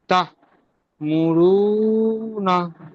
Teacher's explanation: হামজার ওপর সাকিন এসে সাকিন যুক্ত হামজাকে ঝটকা দিয়ে পড়তে হবে।